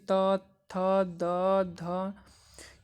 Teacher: तो जो त से शुरू होते हैं, यानी कि त, थ, द, ध, ये सब जो है वो दांत से बोले जाते हैं।